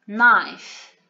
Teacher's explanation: The k at the beginning of the word, we do not pronounce it. It is a silent consonant, so we do not pronounce it.